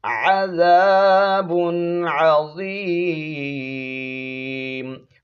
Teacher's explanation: نون کی آواز کو ظاہر کر کے پڑھیں گے، چھپائیں گے نہیں، غنہ نہیں کریں گے۔ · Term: اظہار